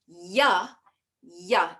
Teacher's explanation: Ya, everyone say ya. That ya occurs in the soft palate at the back of the mouth, in that soft palate above. The broad part of the tongue moves up.